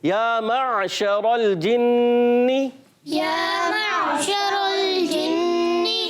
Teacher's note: عین ادا ہوتا ہے حلق کے درمیان والے حصے سے